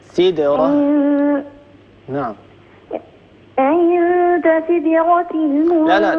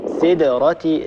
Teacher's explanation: قلقل الدال من غير أن تكسريها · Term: الدال مقلقلة